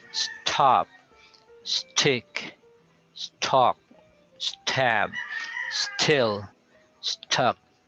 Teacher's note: you sound the s first before you you aspirate the t